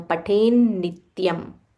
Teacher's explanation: There is a half na and a full ni. So stress on that half na.